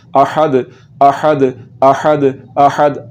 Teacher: इस हा का मखरज हलक का दरमियान वाला हिस्सा है, तो इस हा को हलक के दरमियान वाले हिस्से से निकालना है और इसको पढ़ना है अहद अहद अहद अहद।